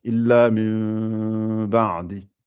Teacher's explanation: Il ne faut pas fermer les lèvres, il faut les laisser légèrement entrouvertes et faire le illa mim. Comme si on fait le M, mais sans coller les lèvres. Ça fait illa mim ba'di. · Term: iqlab